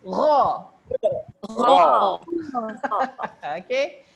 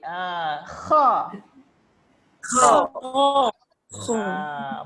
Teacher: dua-dua ni dia datang daripada pangkal kerongkong. Maksudnya bahagian kerongkong yang paling tengah, paling dekat apa?